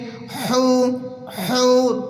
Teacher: ہا کو بالکل حلق سے نکالیں گے، کلیئر کریں گے